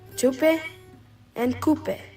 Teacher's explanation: T is often replaced with K in the everyday language.